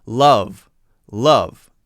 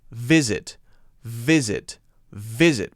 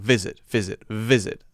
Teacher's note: the bottom lip and a little bit of wind as well we want some air flowing through so that it makes that sort of wind noise